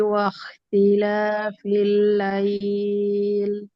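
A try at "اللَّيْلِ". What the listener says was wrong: না, লাইল লাইল সাউন্ডটা হচ্ছে রং একটা সাউন্ড, কারণ এটা হচ্ছে লাই, লাম ফাথা ইয়া সুকুন লাই, তারপর আপনি ইটা টানবেন। আর আপনি যদি লাইল, তাহলে কি হয়ে যায়, লা আলাদা হয়ে যাচ্ছে, ই আলাদা হয়ে যাচ্ছে, আলাদা হবে না, লিন, সহজতার সাথে পড়তে হবে।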